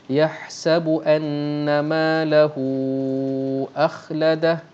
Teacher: Mad silah tawilah. Mad silah panjang, mad silah yang dibaca dengan 4 ataupun 5 harakat.